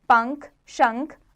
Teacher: अनुस्वार, इसका उच्चारण नाक से होता है। ये न या म के समान होता है, जैसे पंख, शंख आदि।